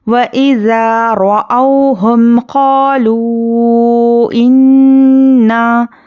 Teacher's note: یہاں پر دیکھیے نون پر تشدید ہے غنہ اچھے سے کرنا ہے